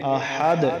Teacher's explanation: وقف میں یہ دال ساکن ہو جائے گا اور دال حروف قلقلہ میں سے، تو اس پر پھر قلقلہ ہوگا